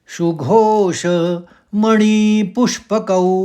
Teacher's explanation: कऊ में पूरे औ की मात्रा है तो कऊ में ही खत्म होगा।